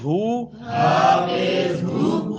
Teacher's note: ہا گلے کے آخری حصے سے جو سینے کی طرف ہے. حمزہ اور ہا یہ دونوں حرف وہیں سے ادا ہوتے ہیں.